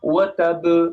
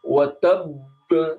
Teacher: walaupun ba ini kokola, tapi dia ada tasdid, maka ditekan, tahan dulu, jangan langsung dipantulkan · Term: kokola yang besar